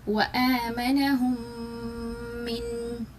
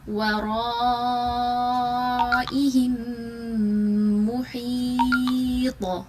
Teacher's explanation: lips کو stress کے ساتھ بند کریں گے اور غنہ کریں گے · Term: ادغام شفوی